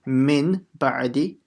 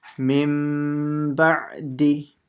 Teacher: We changed the nun completely into a mim. And then we made a light nasal sound, similar to a ghunna.